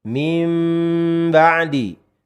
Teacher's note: salamut adalah menempelkan bibir tanpa penekanan.